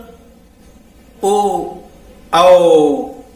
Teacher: ये कंठ और ओष्ठ से उच्चारित होते हैं। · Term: कंठ ओष्ठ स्वर